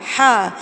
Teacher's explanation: اور ہا حلق میں سے نکلے گا